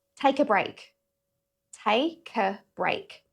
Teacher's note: Again, it doesn't sound like three words here. It sounds like a multi-syllable word.